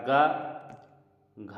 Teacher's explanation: एक अल्पप्राण होता है। एक महाप्राण होता है, फिर उसके बाद एक अल्पप्राण, फिर उसके बाद एक महाप्राण।